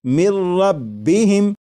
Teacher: لکھا ہوا ہے من، لیکن جب نون ساکن کو را میں ملا کر پڑھیں گے تو پھر نون ساکن کی آواز نہیں آئے گی، بلکہ میم کے بعد را کی آواز آئے گی، اور یہاں پر غنہ نہیں کریں گے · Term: ادغام